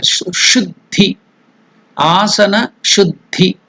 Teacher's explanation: The consonant Dha, another consonant Da. The first one is Mahaprana, more energy, Dha. Second one is less energy, Da. Then vowel E. All these three are mixed, so it becomes Dhi. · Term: Sanyukta Akshara